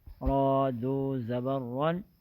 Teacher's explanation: را یہاں موٹی ہے کیونکہ اس کے اوپر دو زبر ہے